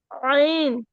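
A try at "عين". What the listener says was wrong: আইন বলা যাবে না, আইনে 4 আলিফ টান আছে। আইন। 4 আলিফ টেনে পড়তে হবে।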